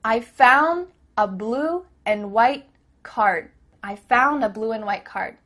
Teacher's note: cut off the letter D at the end of words